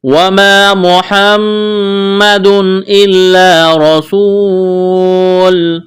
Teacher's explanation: محمد میم مشدد ہے، آواز ناک میں چھپائیں گے، غنہ کریں گے۔